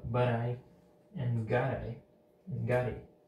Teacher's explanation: So the T with the I forms, they form a flap sound, and the got with it, they also form a flap sound.